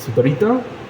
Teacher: le agregan una vocal a final de palabra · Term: paragógica